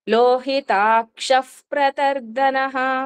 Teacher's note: ప్రా ముందు వచ్చిన విసర్గని ఎఫ్ కింద పలుకుతాము